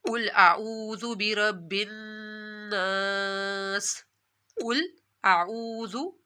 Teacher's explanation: قل کو آپ نے موٹا پڑھنا ہے